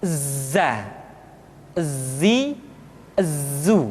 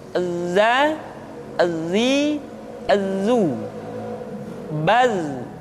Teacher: ketika kita mengucapkan huruf dza suara kita mengalir akan tetapi nafas tidak boleh mengalir